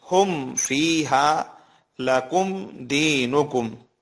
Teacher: number 1، میم ساکن کے بعد میم اور با کے علاوہ کوئی بھی حرف آ جائے تو وہاں پر اظہار ہوگا، یعنی میم کے بعد والے حرف کے ساتھ جب ملایا جائے گا تو بالکل صاف طریقے سے پڑھا جائے گا، ناک میں آواز نہیں جائے گی